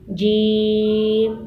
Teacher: زبان کا درمیانی حصہ اوپر تالوں کے درمیان سے لگے گا۔